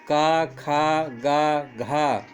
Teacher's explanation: महाप्राण है का खा गा घा है व्यंजनों में होता है पहले अल्पप्राण होता है फिर महाप्राण होता है फिर अल्पप्राण होता है फिर महापुराण होता है